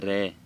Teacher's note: जब हम रे बोलते हैं तो हमारी जीवा है वो प्रकंपित होती है अंदर थोड़ी। इस प्रकार से इसको प्रकंपी व्यंजन कहते हैं।